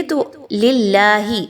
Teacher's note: اس کے نیچے زیر ہے، تو آپ نے حرف جلالہ کو باریک پڑھنا ہے، پر نہیں پڑھنا